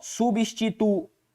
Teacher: O I formando hiato com o U